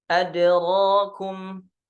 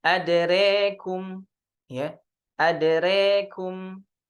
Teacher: di riwayah Syu'bah biimalati fathatir ra wal alif. Ya. Dengan membaca imalah. Ya. Dibaca jadi re.